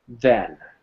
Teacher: want you to put your fingers here again and say then you should notice a slight vibration on your fingers because then uses the d sound or remember it's voice so it will